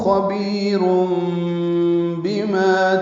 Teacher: تنوین کے بعد با آنے کی وجہ سے رم اقلاب ہے، یہ اس لیے چھوٹی میم لکھی گئی ہے، نون کی جگہ میم پڑھیں گے